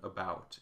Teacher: about is unaccented and a bit indistinct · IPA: /ə/